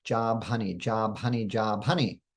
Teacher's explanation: to create an aspirated bus sound we must combine the ba and the ha sound